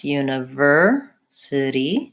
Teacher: stress univer city the city is one to watch out for we tend to use a flap T sounds a little bit like a D